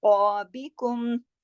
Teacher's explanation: अब देखिए हमजा के साथ आइन भी है, इसकी बहुत अच्छे से प्रैक्टिस कीजिएगा कि दोनों आइन और अलिफ हमजा जो है उसकी आवाज अलग अलग उसमें आपके गले से अदा होनी चाहिए। फिर कॉफ को ओ मोटा पढ़ा जाएगा, बाकी बारीक लेटर है